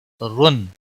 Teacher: را دو پیش کی وجہ سے موٹا پڑا جائے گا، تنوین کے بعد غائن آیا ہے، تنوین کے بعد حروف حلقی کا غائن آیا ہے اس لیے یہاں پر اظہار حلقی ہوگا۔